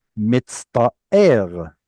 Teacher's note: instead of having a t at the front of the mouth, it turns it into a to at the back of the mouth